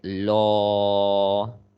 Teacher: if the previous letter has fatha, then the la in the word of Allah is going to be heavy, like law